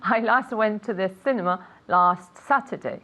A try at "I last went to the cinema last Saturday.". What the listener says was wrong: Perfect. One more time.